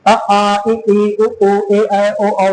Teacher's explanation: आपकी जीभ कहीं नहीं टकरा रही है। और क्योंकि जीभ नहीं टकरा रही है इस नाते वायु बाधित नहीं हो रहा है। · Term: स्वर